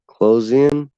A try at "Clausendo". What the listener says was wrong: What? There's not an N in it.